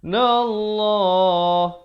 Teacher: Kemudian in, dengung di sini 2 harakat, wajibul ghunnah. Nallah, lafzul jalalah 2 harakat dibaca tebal.